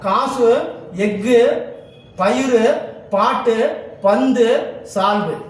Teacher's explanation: இவ்வாறு தனக்குரிய ஓசையை குறைத்து ஒலிக்கும் உகரம் குற்றியல் உகரமாகும் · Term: குற்றியலுகரம்